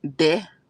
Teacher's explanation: you'll hear a lot of Persians saying it as de, like rather than the.